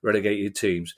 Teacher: I tried so hard to pronounce the T there that I made a double glottal stop.